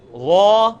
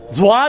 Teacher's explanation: ذال کو آپ نے موٹا کر کے پڑھنا ہے تو یہ بن جائے گا, یہ بنے گا وا.